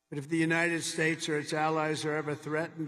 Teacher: hyponasality, under nasality, or what might be called more crudely, a sort of blocked nose or a slightly blocked nose sound